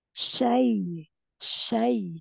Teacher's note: jangan naik ke hidung ya, Bun. Dia nggak ada dengung.